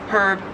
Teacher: In American English, herb, you just don't pronounce the H at all. And in Australian English, it is herb, you do pronounce the H.